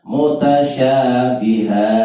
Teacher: Bihanya pendek, hanya ha itu cukup satu ayunan atau dua ketukan. Tidak boleh mutasyabiha terlalu panjang.